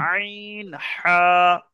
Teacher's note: মানে এই কণ্ঠনালীর মাঝখান হতে উচ্চারিত হয় হা।